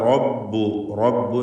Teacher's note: റബ്ബ് എന്ന് പറയുമ്പോൾ റായിന് തഫ്ഖീം കൊടുക്കണം, തടിപ്പിക്കുക. റായിനെ തഫ്ഖീം ചെയ്ത് ഉച്ചരിക്കുക.